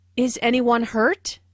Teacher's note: This is a yes/no question, so the intonation rises at the end. Notice how this question is asked in a worried way.